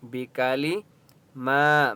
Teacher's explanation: میم کے اوپر کھڑا زبر ہے، 1 الف کی مقدار کھینچ کر پڑھیں گے۔